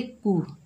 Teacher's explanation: काफ के ऊपर पेश है, बगैर कैंचे पढ़ेंगे कू, काफ बारीक हर्फ है